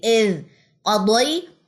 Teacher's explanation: راس اللسان سے یہ ادا ہوتا ہے، جب راس اللسان کیا کرتی ہے؟ ثنایا علیہ اور ثنایا سفلا کے درمیان میں آ جاتی ہے، تب اس کی سیٹی ختم ہو سکتی ہے اور اس میں نرمی آئے گی۔